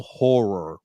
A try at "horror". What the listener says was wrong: Horror, not whore.